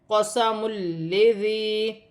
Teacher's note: یہاں پر یا مدہ بھی بن رہی ہے، ذال نرمی والا حرف ہے، 1 الف کی مقدار کھینچ کر بھی پڑھا جائے گا اور ذال کو نرمی سے ادا کیا جائے گا۔ · 2 پیش کی تنوین کے بعد لام آ رہی ہے، تو جب لام آئے گی تو تنوین میں غنہ نہیں کیا جائے گا، لام مشدد ہے۔